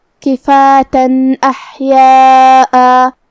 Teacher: اگر ہم یہ آیت کو اگلی آیت کے ساتھ ملا کے پڑھے تو جو کہ حرف الالف کلمت احیاء میں حروف الاظہار میں سے ہے، اور اظہار کا معنی ہے ظاہر کرنا، اور تنوین کی اصلیت نون ساکن ہوتی ہے، تو ہم یہاں تنوین ظاہر کریں گے اور اسے نون ساکن پڑھیں گے اور بغیر غنہ سے یہ حکم کو ادا کریں گے